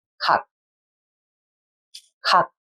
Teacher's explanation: Can you hear that we do not fully pronounce the final consonant sounds when it is in the final position? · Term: 기역 Batchim sound